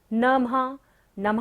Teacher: नमः पर क्या है? विसर्ग है, तो सारी सांस का यहाँ पर क्या करना है? विसर्जन।